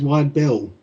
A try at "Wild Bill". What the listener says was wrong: Wild Bill, not Wide Bill. It sounded like you said Wide Bill.